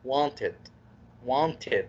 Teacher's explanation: لو الفعل انتهى بأي حرف من ذلك d أو t تنطقها ed. تكسر كسرة بسيطة قبل الد